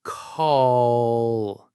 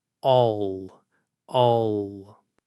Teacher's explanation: As you get to the L sound, the back of your tongue tenses up and pulls back a little bit in your throat. It creates a deeper, fuller, almost muffled sound.